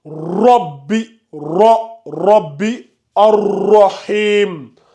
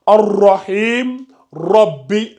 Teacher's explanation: At-tafkhim, c'est-à-dire on fait la lettre emphatique. On augmente de volume.